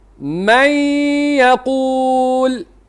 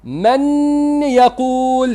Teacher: Kita dari sudut lafaz kita akan masukkan nun dalam ya. Maka kita tidak melafazkan lagi nun. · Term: Idgham bighunnah